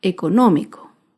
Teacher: último otro ejemplo de una palabra esdrújula es la palabra económico económico se acentúa en la ante penúltima sílaba